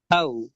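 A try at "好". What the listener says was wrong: வானத்தை நோக்கி போகணும். இல்ல ஹா சொல்லுங்க.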